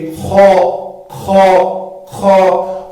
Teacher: خا جو ہے ادنائے حلق یہ منہ کی جانب ادا ہو جائے گا